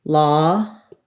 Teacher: So lawful will have schwa there and an E sound. So it sounds like lawfully, but long and then short.